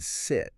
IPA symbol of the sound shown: ɪ